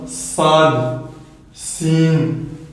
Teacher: ce sont des lettres où on va venir siffler lors de la prononciation de ces lettres et ils auront le même son qu'un volatilier, c'estàdire qu'un oiseau.